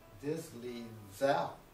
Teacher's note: if you make it a third tone, then you have zao, which means good morning in Chinese.